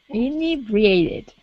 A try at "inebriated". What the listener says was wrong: Good, yeah, with the accent on that E.